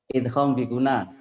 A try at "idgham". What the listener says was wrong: Jangan idham, orang Jawa idham. Idgham. Idgham ya Pak ya.